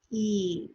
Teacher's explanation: So the tongue is up high in the front of the mouth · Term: E sound